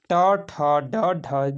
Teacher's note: तो ट जो होता है दोस्तों ये दंत नहीं है। ट ठ ड ढ जो होता है दोस्तों मूर्धन्य से बोला जाता है